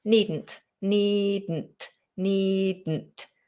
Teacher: You just have to let it explode into the nose.